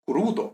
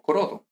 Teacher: Entonces, la U breve se convierte en O. Y crudum, como aquí la U es larga, entonces crudo, no crodo